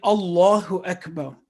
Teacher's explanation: Lam-e Jalala is pronounced thick in Allahu Akbar because it is preceded with a word carrying fatha.